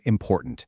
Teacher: the vowel sound in the last syllable of the word important. It shrinks down to what we call a schwa, which is represented by that little upside-down E symbol, ah.